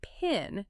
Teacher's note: The P in pin is aspirated. It has a burst of air. You can confirm this instantly by holding your hand or even a small piece of paper in front of your mouth.